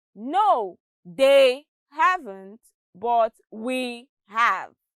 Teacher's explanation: the words they and we are stressed